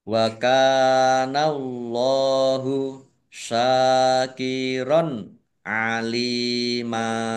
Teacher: Allahnya dibaca tebal karena harakat di depannya Fath